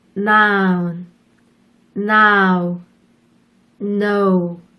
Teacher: N의 경우에는 혀를 윗니에 붙였다가 떼면서 발음을 하는 유성음이에요.